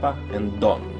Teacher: And last we went through the idea of double consonants, like papa and donna, where the main idea is to make the preceding vowel short and to sit on that consonant for a while before moving on